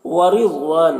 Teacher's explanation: را کے نیچے زیر ہے، را کو باریک پڑھیں گے۔ ضاد حروف مستعلیہ میں سے پر پڑھیں گے۔